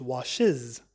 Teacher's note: We learned that wash becomes washes, and the S consonant is pronounced as a Z sound